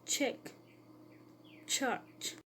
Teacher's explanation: The phoneme Ch has post-alveolar articulation point, that is, the tongue will touch the back of the alveoli near the palate. It has an affricative articulation mode, that is, are formed by the composition of an occlusive and its corresponding fricative.